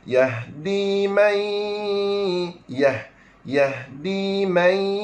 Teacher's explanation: Nun mati bertemu dengan huruf ya, hukumnya idgham ma'al gunnah